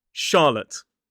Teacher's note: So the R is silent in this word. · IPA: /ˈʃɑːlət/